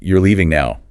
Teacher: The rising pitch on the word now is what turns that statement into a simple yes no question. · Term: rising intonation